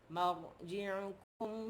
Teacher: Mim fathah jumpa dengan ra baris mati jadi ra tebal.